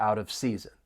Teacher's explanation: the final T in out, you're going to hear me pronounce it as a flap T because it comes between two vowel sounds